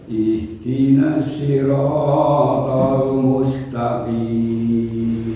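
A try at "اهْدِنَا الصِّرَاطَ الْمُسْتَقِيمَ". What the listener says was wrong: Rohnya satu ayun aja, jangan 1,5 ayun, jangan 3 harokat maksudnya.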